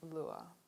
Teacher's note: There are 3 other diphthongs in Australian English where the tongue moves toward the mid-central position of schwa. These are called centering diphthongs. · Now note again that there's no R sound in these words